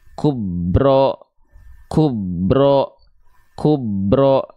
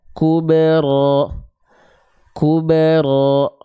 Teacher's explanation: bunyi pantulan kolkolah itu pada huruf ba berbunyi condong ke e, setengah harokat. Ya, jadi kube gitu ya.